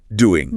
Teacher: and even the g in doing often drops off doing >> it's called elision.